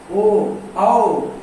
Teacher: जीभ के पीछे की तरफ से आवाज आ रही है, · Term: पार्श्व स्वर